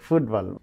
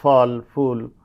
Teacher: যেমন আমরা যখন বলি যে ফুটবল তখন এটা হচ্ছে যে আমাদের এটাকে আমরা বলি যে ল্যাবিওডেন্টাল সাউন্ড। তার মানে উপরের দন্ত নিচের লিপের সাথে ঠোটের সাথে মিলছে।